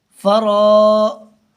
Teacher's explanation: جیم اور ہا نہیں کھینچیں گے نون کھینچ کر کے پڑھا جائے گا